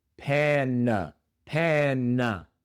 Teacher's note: La primera a no se pronuncia a, sino e el sonido corto más común de la a en inglés. E pe la segunda a se pronuncia con la shua